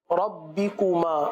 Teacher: پیش کو مجہول ادا نہیں کرنا، معروف ادا کرنا ہے۔ یاد رکھیے واو اور پیش میں گول ہوتے ہیں۔